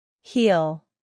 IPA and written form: hil (heal)